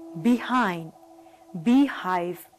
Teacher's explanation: H is a voiceless glottal fricative. Here, the vocal cords are kept close together and the air escapes through the narrow glottis with audible friction